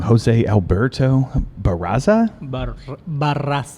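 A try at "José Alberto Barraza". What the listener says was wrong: Yeah, you need to practice rolling the R's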